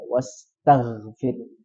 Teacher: Tapi yang betul adalah ta biasa wastagfir dan huruf g dalam keadaan sukun jangan dipantulkan.